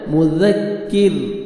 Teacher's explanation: اور کاف کو باریک پڑھیں گے، مذکر، یہاں پہ بھی دیکھیں را ساکن سے پہلے کسرہ ہے، را کو آپ نے باریک پڑھنا ہے